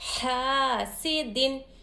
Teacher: الف سے پہلے حرکت زبر ہو تو الف مدہ ہوگا. ایک الف کی مقدار ح کو کھینچیں گے